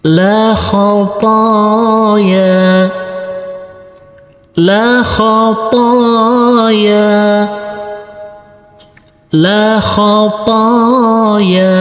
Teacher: huruf lam kita baca pendek, huruf kho kita baca pendek, huruf to kita baca panjang dengan panjang 2 harokat, dan huruf ya kita baca panjang dengan panjang 2 harokat juga.